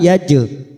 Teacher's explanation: jim sukun qalqalah sugroh karena mati asli di tengah kalimat, kita pantulkan yaj